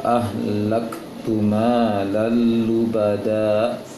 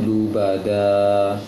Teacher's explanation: Hilangkan hamzah di ujungnya. diusahakan lubada, seperti itu.